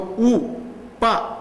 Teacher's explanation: ప అనగానే చూసారా రెండు పెదవులు కలుస్తాయి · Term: ఓష్టములు